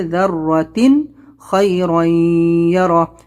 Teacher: تنوین کے بعد میں یا ہے اور یہاں پر ہم اس کو جو ہے غنہ کریں گے · یہاں پر تنوین کے بعد خا حلقی لیٹر اظہار کریں گے